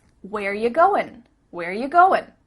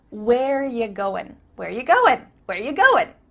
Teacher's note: We just changed it to ya. Ya. Not you, but ya.